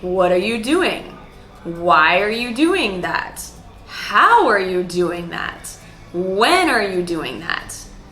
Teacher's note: all of these WH questions go up and then down.